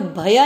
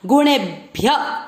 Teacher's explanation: भ को आधा ही बोलना है, कोई भय नहीं बोलेगा। गुणे भ्य य पूरा य में अमिक्स किया और य में अ की मात्रा, इसलिए विसर्ग को पढ़ेंगे ह।